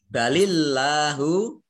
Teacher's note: Allahnya dibaca tipis karena harokat di depannya kasrah di dibaca lemnya tipis balillahu Nah kalau fatnah atau dhomah ini